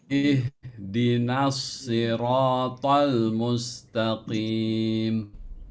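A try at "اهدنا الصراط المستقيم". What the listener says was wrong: Pertama itu dari shod ya. Coba dinaikkan lagi ketebalannya, itbaknya. Soiro, bukan sekedar si ya, siro tapi soiro ya.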